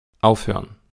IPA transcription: ˈaʊ̯føɐ̯n